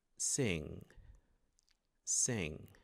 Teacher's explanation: O próximo símbolo parece um N, é uma junção de N com G, como na palavra sing. Você prepara o G na garganta, mas normalmente ele não é pronunciado, ele para ali. Pelo menos na maioria das variantes do inglês.